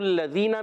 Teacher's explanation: زال جو ہے بغیر سیٹی والا, آپ نے یاد رکھنا ہے.